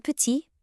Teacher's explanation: that final T just vanishes into thin air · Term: silent letters